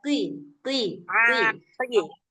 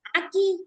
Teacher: Kalau qof walaupun posisi dia berbaris kasrah dia tetap tebal tapi dia enggak setebal kayak huruf th.